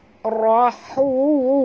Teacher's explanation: Ra ni kena baca tebal, ra baris atas, ra tafkhim